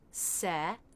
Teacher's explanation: the E as in bed vowel, so the jaw has to drop a good bit, se.